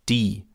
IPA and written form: diː (die)